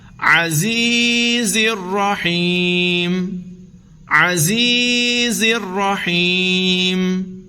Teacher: زا حروف صفیریہ میں سے ہے، اس کو سیٹی کے ساتھ پڑھیں گے، نرم نہیں پڑھیں گے، سخت سیٹی کے ساتھ پڑھیں گے